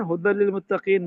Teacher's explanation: ہدی للمتقین میں یہاں پر ادغام بلا غنہ ہے، تنوین کے بعد لام آ گیا. لام اور را میں ادغام بلا غنہ ہوتا ہے.